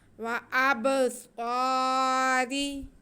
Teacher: را کے نیچے زیر، اس لیے را باریک پڑھا جائے گا۔